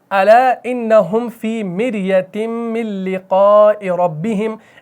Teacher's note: یہاں پر ربہم کا را موٹا پڑھا جائے گا کیونکہ را مفتوح ہے